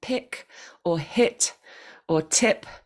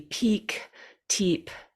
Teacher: One of them I just said was the short I in the word pick or hit or tip, rather than the longer I, which would be peak, teep